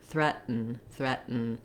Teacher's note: I don't have much vowel before the N sound of threaten. It's called a syllabic N. The N sound itself is the full syllable, so it serves kind of as a vowel and a consonant.